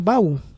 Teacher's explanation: O primeiro A é átono e a segunda vogal é tônica, por isso que deverá ser acentuado. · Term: oxítona